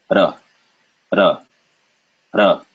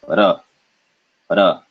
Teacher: Ra, ra, ra. You can kind of hear it slap, it does punch the gum. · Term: trill